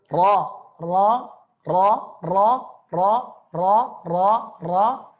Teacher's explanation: Harakatnya fathah terbuka. Tidak maju ke depan. · Harakatnya fathah adalah tebal ya, dibaca tebal.